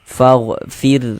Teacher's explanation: Ya, kalau ada huruf ra sukun, jika sebelum ra sukun di sini nih ada ini, ada harokat kasroh, ada tanda baca kasroh. Huruf ra sukunnya ini kita baca tipis, kita baca tarkik, kita tipiskan faghfir.